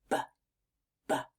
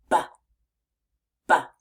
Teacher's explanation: this sound is made in almost the exact same way as the P Sound by pressing our lips together but this time your voice is actually on so watch and listen closely as I make it b b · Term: B sound